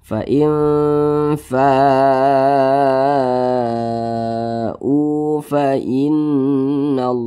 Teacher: panjangnya boleh empat harakat boleh 5 harakat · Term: mad wajib muttasil